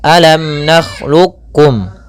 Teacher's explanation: kita memperjelas atau menjelaskan suara mim tanpa ditahan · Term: izhar syafawi